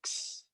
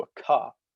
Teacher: in the Western varieties of Greek, that was pronounced as a x, as opposed to a ka, like it was in the Eastern varieties